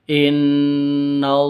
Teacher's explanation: Kata Yang Mulia diperpanjang. Jika posisinya di tengah seperti ini, panjangnya hanya dua ketukan